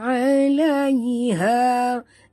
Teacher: 'alaiha ha sini ha simpul, jaga bunyinya daripada dalam halkum